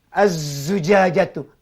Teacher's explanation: Ada bunyi getaran, ada bunyi siulan kerana sifat safir.